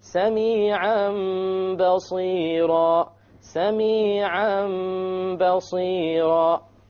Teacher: We change the Tanween into a Meme, and that is called iqlab.